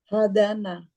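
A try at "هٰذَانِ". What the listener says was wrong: Hadana. Dikasrokan. Dikasrokan nunnya di ikan, bukan hazana.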